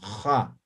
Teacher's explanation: J, pero fricativa. Van a raspar al momento de pronunciar. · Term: la X